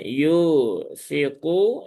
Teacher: y-nya dua harakat ya ada wau sukun setelah dhammah